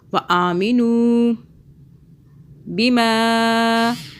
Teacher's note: ما کو 3 الف کے برابر کھینچا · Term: مدہ